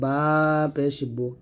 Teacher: বাটা দুই ঠোট মিল করে